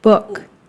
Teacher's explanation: So it's like the sound is sitting right at the tip of my lips when I say book.